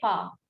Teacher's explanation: We just omit that R and we say far.